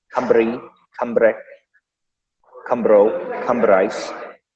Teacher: R is slightly rolled, not in an intense Russian way, just kind of a little softer, more trilled.